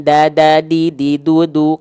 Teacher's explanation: kalau Dal dia tipis dia e bunyinya ringan